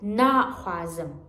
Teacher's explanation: Stress it in the first syllable, right?